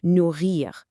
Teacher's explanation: a slight roll or a deep vibration right in the back of your throat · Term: French R